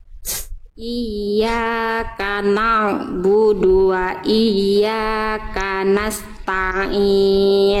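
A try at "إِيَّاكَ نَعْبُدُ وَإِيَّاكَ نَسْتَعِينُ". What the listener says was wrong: Sedikit lagi, masih ada ta. Jangan ta. Jangan dulu ainnya masuk ke ta. Iyyaka na'budu wa iyyaka nasta'in.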